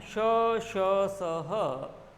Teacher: जिह्वा, तालु और होंठ। जिह्वा, तालु और होंठ एक दूसरे के बिल्कुल पास में आ जाएं और घर्षण हो और ऊष्मा निकले, तो ये वो ध्वनियां हैं श, श, स, ह, जिनके उच्चारण में ध्यान दीजिएगा, ये वो ध्वनियां हैं श, श, स, ह, जिनके उच्चारण में मुख के जो अंग हैं परस्पर निकट आ जाते हैं। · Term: ऊष्म व्यंजन